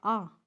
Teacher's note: विवर्त स्वर होता है ओपन, जैसे आ बोल के देखना, जिसमें हमारा मुंह खुल जाता है पूरा आ, तो वो होता है विवर्त स्वर।